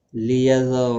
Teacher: را زبر کی وجہ سے پر پڑا جائے گا، باقی کسی بھی حرکت والے حرف کو کھینچنا نہیں.